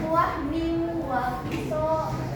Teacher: itu termasuk idgham bigunah dan dibacanya dengung